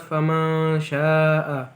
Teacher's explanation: ada nun sukun bertemu sya itu dibaca ikhfa, dibaca samar-samar